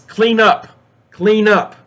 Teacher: the N in clean just leads to the up and you connect them by linking the end with up so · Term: linking sounds